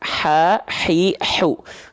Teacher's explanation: tepat di bagian tengah tenggorokan dia mengeluarkan sifat nafas yang berbisik atau pedas ya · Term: hak kecil